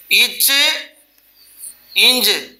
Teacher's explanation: நாவின் இடைப்பகுதி அன்னத்தின் இடைப்பகுதியை பொருந்துவதால் உண்டாகுவது